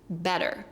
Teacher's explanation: The first E is stressed, the second one is unstressed, so the double T turns into a D. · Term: alveolar flap